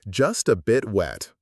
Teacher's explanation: The T at the end of bit is a stop T. We don't fully release it.